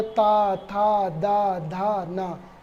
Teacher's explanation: जब हम उच्चारित करेंगे ता, था, दा, धा, ना, तो जीभ हमारी कहाँ लगी, दांतों में